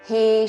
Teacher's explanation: హే దీర్ఘము దాని మీద ఆఘాత